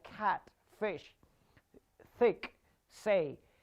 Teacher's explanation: if you speak by putting your hands on your throat you won't feel any vibration so these are voiceless sounds